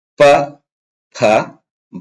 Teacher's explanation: ಎರಡು ತುಟಿಗಳು ಕೂಡುವುದರ ಮೂಲಕ ಉಚ್ಚಾರಣೆ ಆಗತಕಂತ ಅಕ್ಷರಗಳಇವು ಓಷಟ ಧ್ವನಿಗಳು ಅಂತ ಹೇಳಿ ಪ ಫ ಬ ಭ ಭ ಭ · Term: ಓಷ್ಠ ಧ್ವನಿಗಳು